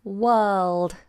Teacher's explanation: So the R is silent and the L is sounded. So you have to get the tongue tip up onto the roof of the mouth.